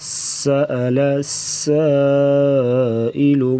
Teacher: سین سیٹی جیسی آواز نکالیں گے اور سختی سے پڑھا جائے گا. سأل سائل، سین پہ مد کریں گے، مد متصل 4 سے 5 الف کے برابر مد کو لمبا کر کے پڑھا جائے گا